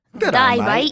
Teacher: So the thing about Australian accent is it's very similar to Cockney, but you got to shove all the sound up through your nose